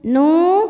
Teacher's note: ada wau sukun yang sebelumnya berbaris damah maka dibacanya Nun dua harakat